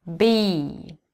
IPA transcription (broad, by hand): biː